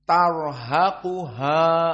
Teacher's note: Dua ha di sini. Tarhaquha, terjepit ha yang pertama antara ra dengan qaf, keduanya mufakhamah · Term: muraqqaqah